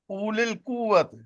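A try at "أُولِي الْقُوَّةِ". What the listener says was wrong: اولی القوہ. نہیں او نہیں کہنا، او اس لیے کہ واو کے اوپر جزم نہیں ہے نا، تو یہ پھر الگ سے ہوگا اولی القوہ.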